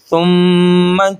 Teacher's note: اب یہاں پہ سم سیٹی کی آواز نہیں آنی چاہیے